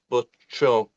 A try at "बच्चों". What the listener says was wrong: So there is a nasalized sound, bacho. There is a nasalized sound there, bacho. Kamron, chehron, kutto, bacho.